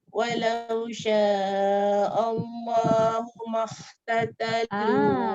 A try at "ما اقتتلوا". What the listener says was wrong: Ma qatatalu. Dia tak boleh keluar angin sebab qaf tu dia syiddah. Dia jahar. Dia tertahan, dia tak boleh makh, dia terlepas dia.